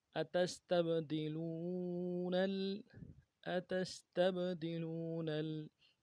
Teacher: نون کو آگے لام کے ساتھ ملائیں گے، لام کے اوپر تشدید زور دیں گے